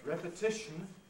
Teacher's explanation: the rhythmic principle forces the first syllable of repetition to be strong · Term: secondary stresses